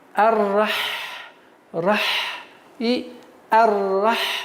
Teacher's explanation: звук Ха является фрикативным звуком, то есть при произношении нужно струить воздух, чтобы продолжалось идти